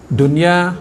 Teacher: izhar Dun ya dia tak boleh dengung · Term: izhar mutlak